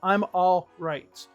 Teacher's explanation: So you can remove the L, but even if you keep the L in there, it doesn't sound bad.